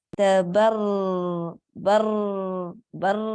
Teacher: را کے اوپر شد ہے, ہمیں را کو موٹا ادا کرنا ہے, پر پڑھنا ہے.